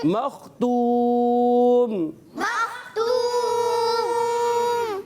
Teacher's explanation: خا کی ادائیگی حلق کے اوپر والے حصے سے, خا کو اچھے انداز سے ادا کریں گے